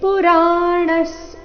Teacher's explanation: ಇಲ್ಲಿ ವಿಸರ್ಗದ ಉಚ್ಚಾರಣೆ ಸ ರೀತಿ ಬರಬೇಕು